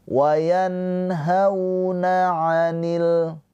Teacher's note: Cara bacanya dilembutkan ya. Dilembutkan ke huruf wau hau atau dilunakkan hauna. Tapi jangan dibaca panjang ya.